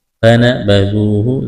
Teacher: ذال کو نرم کرنا ہے، واو ساکن سے پہلے پیش ہے، واو مدہ ہے، ایک الف کے برابر کھینچنا ہے۔